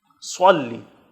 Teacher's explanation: صلی میں صاد ہے، دونوں دانتوں کے اوپر اور نیچے والے، اس کے بیچ میں زبان کو آپ نے فضا میں چھوڑنا ہے، یہ اس کا صحیح مخرج ہے. موٹا کر کے پڑھنا ہے، سین کی طرف باریک نہیں پڑھنا ہے. صلی سلی نہیں، سلی پڑھیں گے تو سین ہو جائے گا اور یہ لفظ غلط ہو جائے گا.